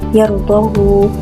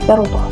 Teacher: Manakala perkataan yardahu dalam surah Az-Zumar ayat 7, Ibn Wirdan akan membaca dengan silah ha, yardahu. Manakala Ibn Jammas akan membaca dengan iskan ha, yardah.